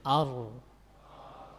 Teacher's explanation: Ra ini memiliki sifat yang namanya at-tikrar, suka memantul-mantul. Tapi harus ditahan.